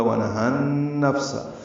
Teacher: فا ساکن پہ ہمس ہے